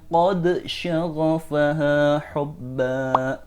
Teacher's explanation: Ketika qad bertemu dengan shin, dal harus dibaca dengan jelas, atau dengan izhar.